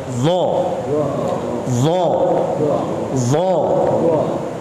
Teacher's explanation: Membaca huruf-huruf tebal, pangkal lidahnya taikin. Pas ketika membaca huruf dha, pangkal lidah taikin.